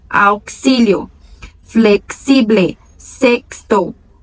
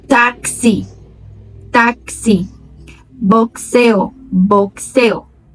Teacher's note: Preste atenção na pronúncia, que é como se tivesse um quê entre uma letra e outra.